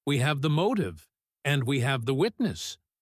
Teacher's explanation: The falling voice on the last word makes it sound powerful and final. It makes the listener feel like the speaker is in total control.